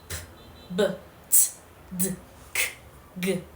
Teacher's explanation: First, we have plosives, also called stops. Air is completely blocked and then released abruptly